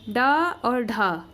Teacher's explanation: ड में कम वायु निकल रही है और ढ में ज़्यादा निकल रही है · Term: महाप्राण